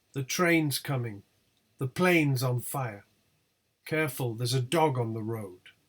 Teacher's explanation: train plane and dog are not the last stressed syllables in these tone units but they receive sentence stress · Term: tonic syllables